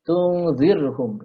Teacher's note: ro sukun di sini dibaca tarqiq ya, dibaca tipis